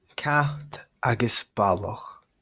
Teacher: Right, so the voiceless letters there, CT, very strongly aspirated sounds in both positions, initial and coda · raising and rounding of the final in balach